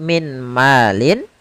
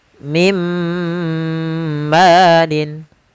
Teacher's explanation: Nah, kemudian Contoh yang kedua, apabila ada nun sukun atau tanwin bertemu dengan huruf mim, yaitu masukkanlah suara nunnya kepada suara mimnya. Maka bukan lagi min malin, akan tetapi menjadi mim malin. · Langsung dimasukkan ke huruf setelahnya dan ditahan suara gunnah pada huruf yang setelahnya. Kalau dia di huruf ya, ditahan di ya-nya. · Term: idgham bi gunnah